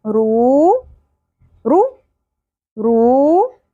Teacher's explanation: را واو پیش رو، ایک الف کے برابر کھینچیں گے